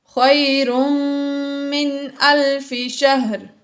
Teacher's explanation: تنوین کے بعد میم آ گیا، اس لیے یہاں پر ہم نے غنہ کیا